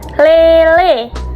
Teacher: Tapi tidak setinggi saat kita mengucapkan I. Nah, bibir kita saat kita mengucapkan e itu akan netral, tidak tersenyum, dan juga tidak membulat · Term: vokal sedang depan